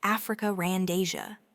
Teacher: Quite often, especially in British accents, you might distinctly hear Africa randia. Notice there is no R in Africa itself, but it's added to seamlessly link the final a sound to the initial a sound of and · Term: intrusive R